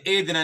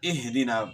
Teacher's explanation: ہا کو جو ہے گلے کے آخر سے صحیح طریقے سے ادا کرنا ہے